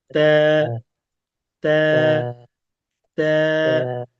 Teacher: আমাদের যে জিহ্বা আছে এই জিহ্বার যে উপরের দিকে যে দাঁতের গোড়া আছে, মাড়ি, উপরের দিকে তালু, এর সঙ্গে লেগে উচ্চারণ হবে তা। পাতলা পাতলা করে তা।